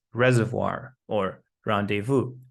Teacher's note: in some loan words from French such as reservoir or rendevu, we can hear a w sound